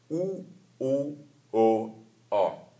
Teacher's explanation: Den bliver kaldt U-rækken. Og U-rækken har man på samme måde, som man har med Y-rækken, kyssemund, altså rundede læber, når man udtaler det.